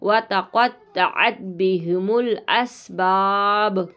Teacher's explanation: با ساکن ہو جائے گا اور آواز پلٹ کر آئے گی